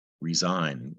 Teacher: you don't hear the G, resign. And secondly, the S makes a Z sound, resign. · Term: silent